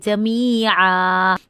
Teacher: आइन हलक से निकालेंगे, अलिफ मद की वजह से हम थोड़ा सा लंबा करेंगे, जमीआ। देखिए यहाँ पे तनवीन का 2 ज़बर थी तो हमने 1 ज़बर अदा की है, ये बिल्कुल साकिन आइन नहीं हुआ, जमीआ।